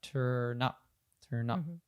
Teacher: we're not saying those equally but we're actually reducing the up a bit and the turn connects to it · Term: connected speech